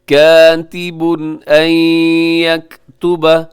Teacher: تنوین کے بعد حمزہ ہے تو یہاں پہ اظہار حلقی ہوگا